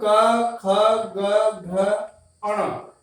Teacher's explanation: क वर्ग का जो उच्चारण है वो कंठ है, कंठ